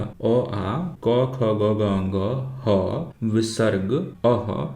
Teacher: इन सभी वर्णों का उच्चारण कंठ स्थान से होता है।